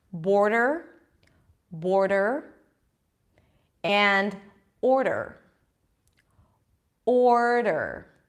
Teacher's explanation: So remember, the R needs to be very light. You have to leave enough room for the vowel before, a very light D, and then you bring it in for an R immediately. So there is no vowel in between.